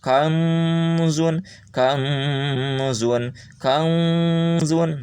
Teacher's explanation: Nanti bunyinya akan samar antara n dan ang.